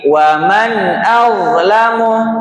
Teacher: Jangan dipantulkan karena bukan huruf memantul.